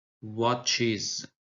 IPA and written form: 'wɒtʃɪz (watches)